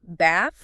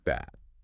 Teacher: It is in British English often that longer open sound like in father. So bath. Whereas in American English it's usually shorter. More like the a and cat bath.